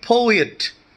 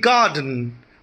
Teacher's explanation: the first syllable is stressed and the second one is unstressed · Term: troik meter